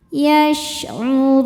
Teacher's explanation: Huruf ro dibaca secara tafkhim karena berharokat dhammah. Cara baca huruf ro ini adalah ditebalkan. Run apabila berhenti hukumnya mad arid li sukun.